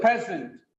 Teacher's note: It's a very good present. The first syllable is stressed.